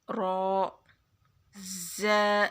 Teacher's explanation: را کو موٹا پڑھنا ہے، را منہ کو گول کر کے